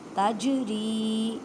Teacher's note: جیم ساکن کلکلا کریں، را کو باریک پڑھیں اور را کو ایک الف کی مقدار میں کھینچ کر پڑھیں